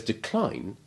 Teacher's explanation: decline is like fatigue and always keeps the stress on the second syllable, whether it is the verb or the noun.